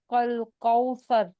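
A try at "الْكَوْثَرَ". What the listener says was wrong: نہیں دیکھیے، قاف حلق سے مت نکالیے، کل کوثر آرام سے. ہاں کل کوثر. ہاں کل کوثر.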